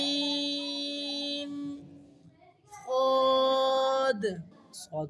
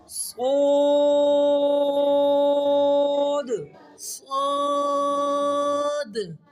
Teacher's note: موٹا الف بھی موٹا صاد سیٹی واضح ہو